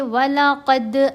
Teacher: وَلَقَدْ آتَيْنَا مُوسَى الْكِتَابَ مِنْ بَعْدِ مَا أَهْلَكْنَا، وَلَقَدْ قاف کو موٹا پڑھیں گے، دال کے اوپر یہاں ہم نے قلقلہ کرنا ہے، دال کی آواز کو ہلانا ہے